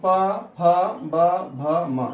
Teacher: यहाँ प लिखा है, इसका मतलब होगा पवर्ग। इनके उच्चारण में ओष्ठ की सहायता ली जाती है, अर्थात आपका दोनों ओष्ठ सट जाते हैं, इसलिए इसको ओष्ठीय वर्ण कहते हैं।